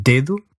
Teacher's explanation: This was a D but articulated with the tip of your tongue against your front teeth.